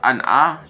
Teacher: terdapat izhar karena huruf nun sukun bertemu dengan ain dengan cara membacanya tidak dengung sama sekali.